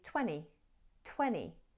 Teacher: sometimes you'll hear native speakers drop the second T in 20. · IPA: /ˈtweni/